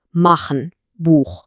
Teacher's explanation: Der harte Achlaut dagegen, der kommt tief aus dem Rachen.